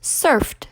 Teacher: If we take the word surf, I would say surfed, which is somewhere in between the D and the T